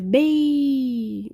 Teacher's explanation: Primeiro vem a vogal no ápice, e depois a semivogal, ou seja, bem. Você começa falando alto e termina mais suave. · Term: ditongo